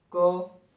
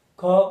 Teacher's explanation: जब क बोला तो कोई जोर नहीं पड़ रहा है, ख जब बोल रहे हैं तो क्या है, जोर पड़ रहा है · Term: महाप्राण